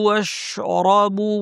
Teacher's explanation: জিহ্বার মাঝখান থেকে শিন এবং রটা ভারী করে পড়তে হবে। ওয়াশরাবু তার উপর ছোট আলিফ টান।